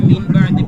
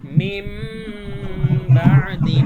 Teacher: নুন সাকিনের পরে যদি বা আসে তাহলে আমরা এই নুন সাকিনকে মিম বানিয়ে পড়বো